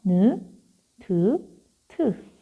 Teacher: 발음되는 곳은 동일하지만 소리의 세기의 차이가 있잖아. 소리가 세질 때마다 느, 드, 트.